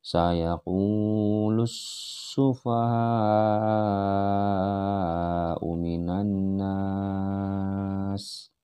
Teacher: Lamnya melebur ke dalam sin yang bertasydid.